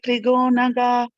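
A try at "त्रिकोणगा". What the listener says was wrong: It is Trikonaga. Okay, it's not Trigonaga. It is Trikonaga.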